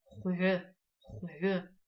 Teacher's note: вы как будто бы произносите тот же звук х, только губы округляете, и получается у вас вместо х хо